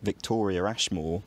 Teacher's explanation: I put a r sound between Victoria and Ashmore even though there isn't one in spelling